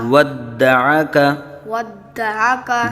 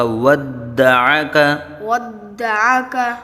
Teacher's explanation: ودعک دال مشدد ہے اور حرف قلقلہ میں سے ہے، جماؤ کے ساتھ اس میں قلقلہ ہوگا